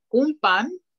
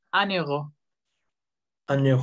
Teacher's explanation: Pero si la palabra que sigue es vocal, entonces la N ya no es nasal, ya suena como la N española. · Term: liaison